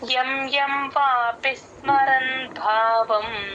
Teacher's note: భావంలో భాకి మహాప్రాణం ఉంది గమనించండి